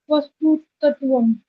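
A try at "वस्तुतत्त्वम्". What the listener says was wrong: तत्वम नहीं गुड़िया, वस्तु तत्वम। जो सेकंड वाला त है वो आपको क्विक बोलना पड़ेगा, एकदम से बोलना। तत्वम।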